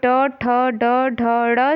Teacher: फिर यहाँ पे ट, ठ, ड, ढ, ड़ जो है वो जब आप बोलेंगे तो आपकी जीभा जो है वो मुड़ती है, तो इसलिए वो मूर्धा से उच्चारित होती है।